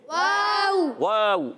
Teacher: تو واو پر زبر بھی ہے. واو کی ادائیگی ہونٹوں کی گولائی سے. واو پر زبر، ہونٹ گول ہو جائیں گے، حرکتیں نہیں کھینچیں گے.